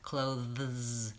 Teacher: the word clothes like I have my clothes in the closet this has a cluster at the end which is a voiced th and a voiced Z · This has a cluster at the end, which is a voiced th, th, and a voiced z, clothes. So many Americans will pronounce this just as close.